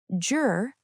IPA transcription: dʒr